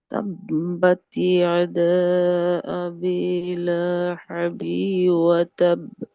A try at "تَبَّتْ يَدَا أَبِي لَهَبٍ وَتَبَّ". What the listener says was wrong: এই যে এই হাটা হা গলা চেপে হয়ে গেছে, লাহাবি ওয়া তাব।